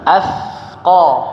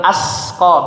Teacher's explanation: Lidahnya, ujung lidah dengan gigi atas ya, ujung gigi seri atas. Athqa. Ya, jangan jadi sin, jangan asqa. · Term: tha